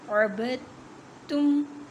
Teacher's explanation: ساکن دال کو چھوڑ دینا ہے، تا کو میم کے ساتھ ملائیں گے اور پیچھے جو با متحرک ہے اس کو تا کے ساتھ ملا کر ادا کریں گے، عبدتم۔ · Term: تشدید